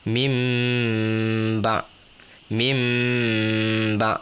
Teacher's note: mim ba mesti dua harakat jangan baca laju · Ingat, iklab 2 harakat panjang. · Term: iqlab